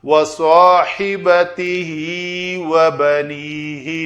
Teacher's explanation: ہا ضمیر کا ماقبل اور مابعد دونوں متحرک ہیں تو یہ ہا کھڑی زیر کے ساتھ ہے تو اس کو یا مدہ بنا کر ذرا لمبا کیا جائے گا